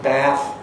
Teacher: it's often actually quite long in duration in American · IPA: /bæθ/